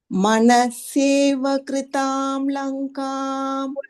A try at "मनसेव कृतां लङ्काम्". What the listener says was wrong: Still saying you are still saying manaseva. You're adding a extra sakara there. So no need.